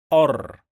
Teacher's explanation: When we add al to any word starts with ra, we don't pronounce the lam. Ar. Then we pronounce the ra 2 times. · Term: lam shamsiyya